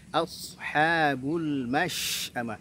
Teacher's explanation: Shin, perhatikan punya sifat tafasyi ya, sifat tafasyi. Jangan mash, tapi mash'amah.